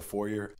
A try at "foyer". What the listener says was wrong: It's a foyer. You don't pronounce the R.